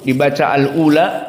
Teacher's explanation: maka jumhur membaca wal ula dengan dua harokat saja